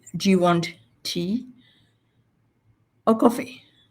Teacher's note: it's like it goes up and then comes down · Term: rice fall